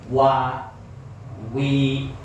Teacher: tetap moyong dulu wa monyong dulu karena menyesuaikan makhraj di mana pengucapan huruf wau wau itu makhrajnya dua bibir dimonyongkan atau mencucuk